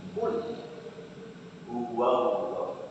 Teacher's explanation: fathah ketemu dengan lam jalalah, maka membacanya harus tebal. Ya, itu namanya tafkhim.